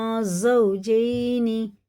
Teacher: زا سخت ہوتی، جیم باریک ہوتا